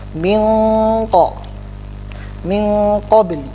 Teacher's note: Kalau kita ketemu dengan huruf ikhfa, nunnya itu tidak terlihat jelas nun, tetapi tersamarkan dengan huruf setelahnya.